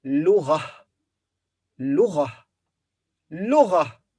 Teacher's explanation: The lam has ضمة, so it will be لو, and the غين has فتحة. Then تاء مربوطة here at the end, and we stop here, so we pronounce ها, H